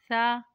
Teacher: नोक और ऊपर की दांतों की जड़ से अदा होता है सा जुबान का सिरा और ऊपर के दांतों के अंदरूनी किनारे से लगे तो सा की अदायगी होती है